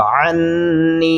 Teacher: इससे अगला नून जो है वो लंबा होगा। अन्नी, गुन्ना भी करेंगे और आइन को गले से अदा करेंगे